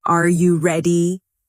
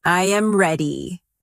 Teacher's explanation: the pitch of their voice goes up at the end. · The voice falls naturally at the end.